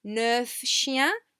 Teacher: We do tend to pronounce the final F.